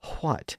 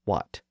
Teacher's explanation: World English also required a slight H sound before the W in words that begin with a wh